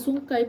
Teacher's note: Sungkai pula diakhiri dengan bunyi diftong Ai bunyi tersebut dihasilkan dengan kedudukan lidah secara anggarannya pada posisi semasa · dihasilkan dengan kedudukan lidah secara anggarannya pada posisi semasa menghasilkan bunyi vokal depan luas A dan dengan pantasnya beralih ke bunyi vokal depan sempit E